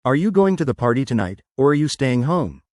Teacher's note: Yes, the question intonation is good, but focus more on stressing the key words, party and home. It adds a bit more emphasis and clarity.